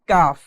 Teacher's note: এরপরে দেখুন 5 নাম্বার মাখরাজ, জিহ্বার গোড়া থেকে একটু আগে বাড়িয়ে তার বরাবর উপরে তালুর সঙ্গে লাগিয়ে পড়তে হয় কাফ। কাফ জিহ্বার গোড়া থেকে একটু সামনের দিকে আসে